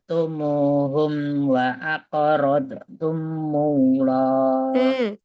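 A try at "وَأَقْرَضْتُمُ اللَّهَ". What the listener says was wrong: Wa aqrad radhi ya jangan mantul. Istifalanya dinampakkan lagi.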